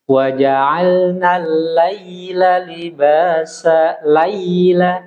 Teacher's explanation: Itu kaidah lin. Ketika huruf ya sukun didahului fathah, maka condongkan suaranya ke i.